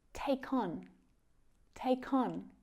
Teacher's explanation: That words starting with a vowel sound are often connected to the end of the word before it. So on doesn't sound too different in its unstressed form, but it does often get pulled towards the word before it when spoken quickly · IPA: /ɒn/